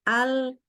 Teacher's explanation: Inhiraf ini adalah posisi di mana sebenarnya posisi lidah ini miring ya.